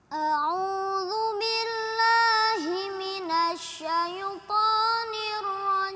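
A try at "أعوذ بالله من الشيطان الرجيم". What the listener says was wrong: Ini kadang-kadang yang kita tidak sadari ketika a'udzu billahi mestinya langsung nempel. A'udzu billahi jangan minas kayak ada delaynya gitu. A'udzu billahi langsung a'udzu billahi minasyaitonir rajim.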